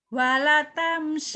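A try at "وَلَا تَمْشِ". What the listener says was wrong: Wala panjang.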